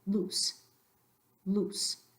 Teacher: in Spanish you're not gonna elongate that vowel